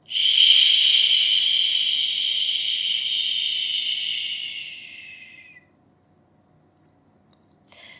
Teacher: a shh sound is not as though you're in a library and you ask someone to sh be quiet. This is more of a long drawn out sh.